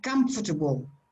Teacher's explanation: on the first syllable and that is strong so the this the syllable that is in the middle is very soft and sometimes disappears almost disappears so you say comfortable not comfortable comfortable you see